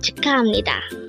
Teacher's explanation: it is pronounced as ham because in Korean, we need to change the sound of biyup to a miyum if it is followed by a neon character